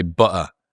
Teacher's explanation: There's two T's in butter, and they're not saying either of them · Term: glottal stop